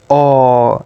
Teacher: it's a long mid back rounded monothong